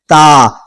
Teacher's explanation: दांतों की जड़ में, अंदर से जड़ में जहां से दांत निकला है वहां पे जाकर जबान की नोक टच होती है, टकराती है, फिर जाकर ये वाला हरफ अदा होता है ता।